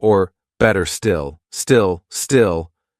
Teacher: when I'm making this dark L I'm smiling I'm going because that's much easier to make rather than doing